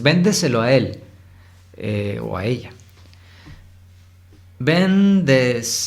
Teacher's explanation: ven es la sílaba tónica